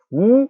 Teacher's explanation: 우 하면은 턱이 좀 약간 위로 올라가면서 이렇게 발음하잖아요